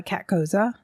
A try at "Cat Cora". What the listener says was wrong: Cat Cora, but yes. You said Cat Cosa.